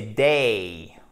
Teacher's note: quand on a un E suivi comme ça du I court, c'est une diphtongue